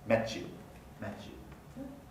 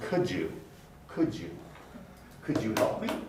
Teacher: So blending really means blending together the features of different segments. So the T plus Y becomes Ch, the D plus Y becomes J.